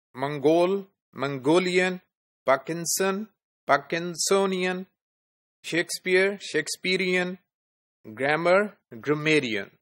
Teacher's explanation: there is a shift of stress from the first syllable or from this from one syllable to the last syllable right